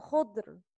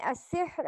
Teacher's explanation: را is heavy in خضر. را is light in السحر.